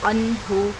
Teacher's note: ہے تو یہاں پر اظہار کا قاعدہ ہو رہا ہے، انہو، نون ساکن کی آواز کو اچھالیں گے نہیں، ظاہر کریں گے